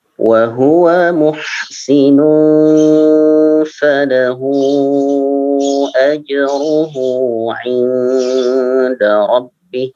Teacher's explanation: Untuk ha falahu itu lebih panjang dari ha yang kedua. Ajruhu lebih panjang ya. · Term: mad jaiz